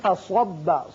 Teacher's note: یہ چونکہ صاد ہے اس کو پر پڑھتے ہیں، فصبہ نہ ہو بلکہ فصب.